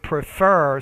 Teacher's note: with that verb your stress is on the second syllable